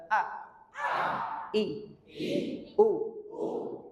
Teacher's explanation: ucapkan huruf A di ee makhraj bagian tenggorokan paling bawah